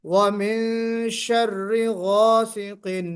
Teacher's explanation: یہ گاسقن نہیں ہے، یہ گاف نہیں ہے بلکہ غین ہے.